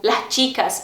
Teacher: Em alguns casos eles têm o S aspirado, tipo las chicas, em vez de las chicas.